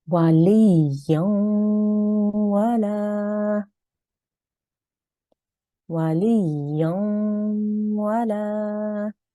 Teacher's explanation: So if the waw mushaddad or ya mushaddad has a letter before with tanween, a fatha, a kasra, or a dhamma, tanween, then you will make a 2-second nasal sound, right, when you are joining those letters together